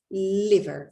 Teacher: Recuerden que se pronuncia sin diptongo, es liver.